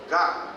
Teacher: ಆ ನಾಲಿಗೆಯ ಬುಡದಲ್ಲಿ ಅದು ಉಚ್ಚಾರಣೆ ಆಗ್ತದೆ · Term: ಮೂಲಸ್ಥಾನ